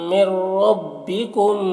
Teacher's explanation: نون ساکن کے بعد را ہے حروف یرملون میں سے، تو نون کو را سے ملا کر بغیر غنہ کے پڑھیں گے۔ اور رائے مشددہ کے اوپر زبر ہے تو را کو پر پڑھیں گے، اور یہاں پر کم کے میم میں اظہار شفوی ہو رہا. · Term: ادغام تام